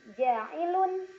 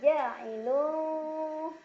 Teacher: tanwin dhammah disamarkan ke huruf fa sambil berdengung. Jadi bukan ja'ilun, melainkan ja'ilu. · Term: ikhfa awsat